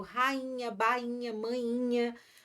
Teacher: tem que estar longe do NH, porque o NH, o som fica nasalizado